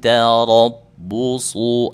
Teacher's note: Tarabbusu itu huruf ra, huruf dibaca tebal karena berbaris fathah.